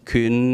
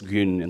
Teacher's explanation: in Turkish, a lot of these initial consonants got voiced